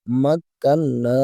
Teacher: নুন আলিফ জবর না, এক আলিফ টান হবে